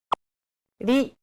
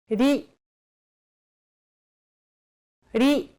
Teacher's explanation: Think of the quick tapping motion your tongue makes as it strikes the top gum ridge in words like ladder or butter.